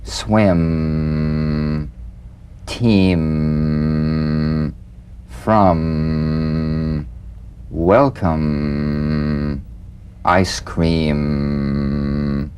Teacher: be very relaxed almost puffy feeling not pressed together or tight feel a vibration in the fleshy part of the lips now sustain the M in these words swim team from welcome · the M is a nasal labial consonant made with the lips